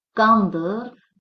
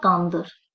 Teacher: vurğu birinci hecada olar